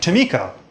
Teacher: Maybe you also noticed that the first schwa is more nasal than the other one